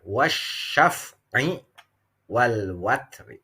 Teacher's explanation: Kalau dibaca waqaf, ro tafkhim, ro-nya tebal. Tapi kalau memberlakukan waqaf mamnu lalu dibacanya menjadi wasal atau sambung, maka terjadinya ro tarqiq.